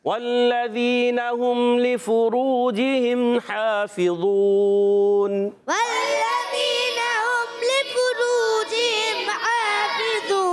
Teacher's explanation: واو مدہ ہے، اس کے بعد عارضی سکون آ رہا ہے، اور ہو جائے گا یہاں پر مد عارض